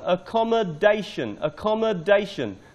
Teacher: The stress is on the fourth syllable.